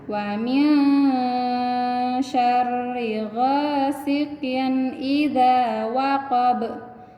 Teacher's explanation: Ini idhar namanya, dibacanya jelas, N-nya dibaca jelas. Kemudian di akhir ayatnya itu ada huruf ba yang disukunkan, apa? Qalqalah kubra. · Kasroh tain bertemu dengan huruf i atau huruf alif. Ini idhar namanya, dibacanya jelas, N-nya dibaca jelas.